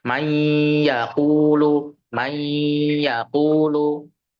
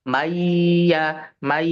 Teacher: Bukan dipanjangkan yanya tapi di idghamkan atau digunahkan di situ. · idgham bighunah itu membacanya dengan dengung 2 sampai 3 harakat